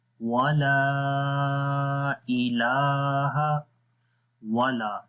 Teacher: لام کے بعد الف ہے، الف سے پہلے زبر آ گئی تو یہاں پر بھی ایک الف کے برابر یعنی 1 سیکنڈ لمبا کریں گے، اور اس کے علاوہ یہاں پر الف کے اوپر مد بھی ہے، یہ چھوٹی مد ہے، چھوٹی مد کو 2 سے 3 الف کے برابر لمبا کرتے ہیں۔